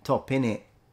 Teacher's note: particularly when there are T's, they are replaced by glottal stop.